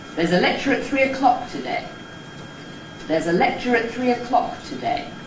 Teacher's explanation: the Nucleus is on ‘-clock’, just a single syllable. · The Tail, as we were looking at yesterday, follows the Nucleus there on ‘today’. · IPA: │ There’s a ˈlecture at ˚three o’ˋclock to ₒday │